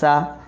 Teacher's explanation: कम से कम तीन अलिफ के मदार लंबा किया जाए